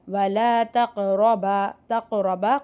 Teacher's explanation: காஃப் சுக்குன் கல்கலா அசைச்சு ஓதணும்.